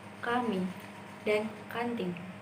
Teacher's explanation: konsonan n merupakan nasal alveolar bersuara · konsonan N yang merupakan nasal alveolar bersuara yang juga hanya memiliki 1 alofon dan bisa terdapat di awal maupun akhir kata.